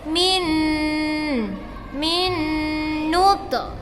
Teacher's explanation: nun mati bertemu dengan nun. Pembacanya adalah idgham bi gunnah, didengungkan. Min nut. Ada qalqalah ya nak.